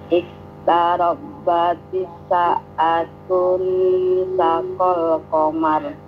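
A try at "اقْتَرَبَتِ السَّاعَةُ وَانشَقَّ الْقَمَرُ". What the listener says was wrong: Wan syaqqal sama tu-nya itu tu ya, bukan tun ya. Idgham syamsi, ujungnya itu tidak boleh tanwin. Iqtarabatis sa'atu wan syaqqal qamar. Wan itu as-sa'atu ya, jangan tun gitu.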